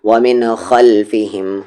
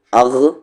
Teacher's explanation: خا کا مخرج اپر تھروٹ جہاں سے غین کی آواز نکلتی ہے